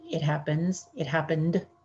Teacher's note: normally we just put a little d sound at the end